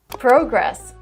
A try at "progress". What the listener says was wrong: Oh, so you pronounced it in the British way. Americans should say progress.